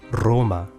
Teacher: the letter R was trilled